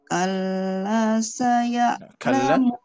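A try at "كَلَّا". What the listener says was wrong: Kalla, kurang panjang sedikit lagi. Kalla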